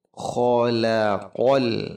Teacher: Khalaqal kha dijaga huruf kha supaya tetap ngorok, ada di tengah, ada di tenggorokan paling atas